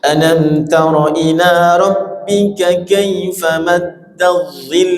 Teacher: lam yang bertasydid dan diwakaf suaranya diakhiri dengan suara nada tinggi atau disebut naber ditinggiin